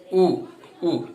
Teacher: ऊ बोलेंगे तो हमारी जीभ खिंच के आ रही है अंदर से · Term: पश्च स्वर